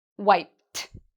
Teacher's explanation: The way we pronounce this ED ending is actually like a T sound.